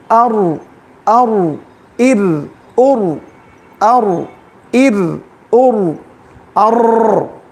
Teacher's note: را جب ساکن ہو جائے گا تو اس کی کیفیت کیا ہونی چاہیے؟ تکرار کے ساتھ نہیں